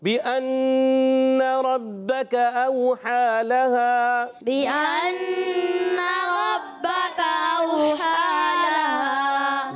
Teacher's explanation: बिअन्ना नून मुशद्दद है। एक अलिफ का गुन्ना करेंगे हरकत को नहीं खींचेंगे। रब्बक रा पुर रखेंगे। · ये काफ जो है ना बारीक वाला ज़बान की जड़ और तालु का सख्त हिस्सा काफ बारीक वाला। · रब्बक रा पुर रखेंगे। बाद थोड़ा जमाव के साथ अदा होगा क्योंकि मुशद्दद हर्फ है।